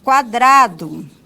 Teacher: como a semivogal aparece antes, então, nós temos aí que é um ditongo crescente